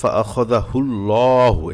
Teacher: এখানে আল্লাহ শব্দের প্রথমে পেশ আসছে, এজন্য ল পড়তে হবে, মোটা করে পড়তে হবে। আবার লামে খারা জবর আছে, এক আলিফ টান দিয়ে পড়তে হবে।